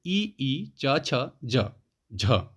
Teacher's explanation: उच्चारण स्थान किससे होता है? तो ये तालु से होता है। तालव्य ध्वनियां।